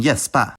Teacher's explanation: and G is pronounced [j], like in gäspa